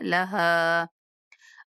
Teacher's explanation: یہ ہا جو ہے وہ حلق کے سب سے نچلے حصے سے ادا ہوتی ہے تو بھاری آواز میں ادا ہوتی ہے